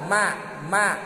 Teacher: mim kaluarna teh tina biwir biwir sabareji biwir dua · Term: sapawi